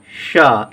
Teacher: क्योंकि इसके उच्चारण में हम लोग जीभ को, जो हमारे मुंह में जीभ होती है, इसे हम उच्चारण करते हैं, शब्द बोलते हैं, तालु को स्पर्श करते हुए यानी कि तालु को छूते हुए बोलते हैं, इसीलिए इसका नाम तालब पड़ा। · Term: तालब सा